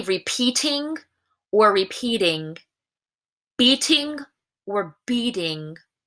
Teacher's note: it's actually not a dud it's more of a very quick voiced T